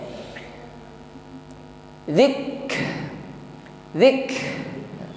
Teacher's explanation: Kaf sukun ditekan membacanya setelah ditekan syiddah sifatnya diikuti dengan sifat berikutnya yaitu Hames ya tetap mengalir nafasnya · jadi ada nafas yang mengalir di situ tetapi alirannya tidak sepanjang huruf yang memiliki sifat rakhawah